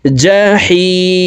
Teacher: জিম হরফকে জিহ্বার মধ্যখান থেকে পড়তে হবে